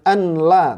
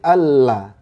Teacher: Idgham itu melebur, nunnya hilang langsung masuk ke huruf berikutnya